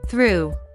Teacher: To pronounce the th in through, we make loose contact between the tongue and the back of the teeth and push the air through the gap. This is a voiceless sound, so we don't have to vibrate our throat to produce the sound.